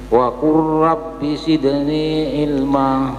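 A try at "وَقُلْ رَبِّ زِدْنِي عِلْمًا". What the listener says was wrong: Zidni ilma. Masih kurang tertampil zanya, rizal, bukan risal, rizal, ya. Wa qur rabbi zidni. Ilma.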